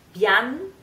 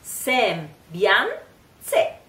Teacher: you can hear like the N, bian, it's just pronounced just a little bit, it's kind of a nasal, very fast sound